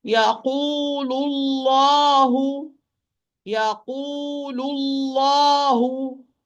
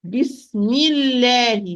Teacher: the lamb of Allah would be light letter if it's proceeded by kasra